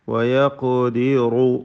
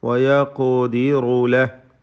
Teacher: തഫ്ഖീം ചെയ്ത് ഖാഫിനെ ഉച്ചരിക്കണം. വയഖദിറു റായിനും തഫ്ഖീം കൊടുക്കുക.